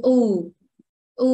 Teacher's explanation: It's not long enough. Em đọc là u và chu môi lên. Dài hơn xíu.